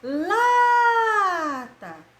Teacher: Lata. A sílaba tônica é lá.